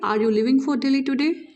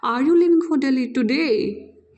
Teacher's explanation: आर यू लिविंग फॉर दिल्ली टुडे, that's here I am putting the falling tone, but in case when I am putting the rising tone, how it sounds like a question, are you living for Delhi today।